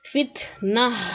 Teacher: نصیبت، اشہد اشہد، بغین بغیا، فتنتن فتنہ، اب یہاں پر دیکھیں جو گول تا ہے اس کو اگر ہم وقف کریں گے تو پھر یہ ہا میں بدل جائے گا